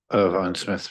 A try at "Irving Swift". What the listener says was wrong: I'm sorry, Chair. Well, my husband would say to me, but nobody seems to have it right. My children said.